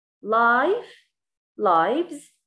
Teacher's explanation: لاحظوا life lives الصوت طلع معاي ز